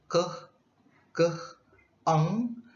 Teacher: produced by raising the back of the tongue to the soft palate or velum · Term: Velars